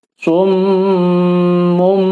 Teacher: Makanya di sini ditandain dengan huruf mim kecil. Maksudnya bunyi suara nun sukun atau tanwin, bunyi suara n, tadinya summun, tapi karena bertemu ba menjadi bunyi suara mim sukun. Summum. Selain dibaca huruf mim sukun, juga harus ditahan 4 ketukan. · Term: iqlab